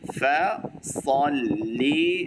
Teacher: সদের উচ্চারণটা করতে হবে ভালো করে, সল মোটা হবে।